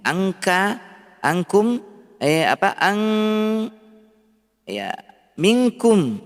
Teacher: Berarti ikhfanya tinggi. Adapun qaf kaf dia sangat jauh hurufnya dari huruf nun sehingga suara ikhfanya rendah. Tinggi dengungnya.